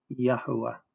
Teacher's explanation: Our Creator's name has A vowels, not E vowels, and they are long A vowels